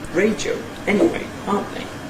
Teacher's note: A whole series of High Falls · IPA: ˋreɪdjəʊ ∣ ˋeniweɪ ∣ ˋɑːnt ðeɪ